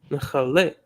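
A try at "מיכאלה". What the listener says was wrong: That is not Kale, but Chale. I was putting the wrong emphasis on the wrong syllable in order to bring out the right consonant.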